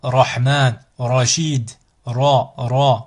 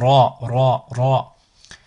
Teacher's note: Ici, Ra, Ra, comme Rahman, Rachid, Ra, Ra. On enroule, comme en espagnol. Un R roulé, Ra, Ra, Ra.